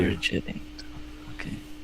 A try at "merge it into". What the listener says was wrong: Maybe it still did a little bit of an ing. So see if you can move it more towards it. It in.